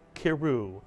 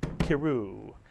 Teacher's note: it would be pronounced as one syllable, keru, as if the shva under the kaf is a grace note.